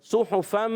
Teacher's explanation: پیش دونوں پیش آئیں گے تو ہونٹ گول ہو جائیں گے